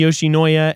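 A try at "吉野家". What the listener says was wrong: No, it's not. I don't know why he's pronouncing the I. It's Yoshinoya.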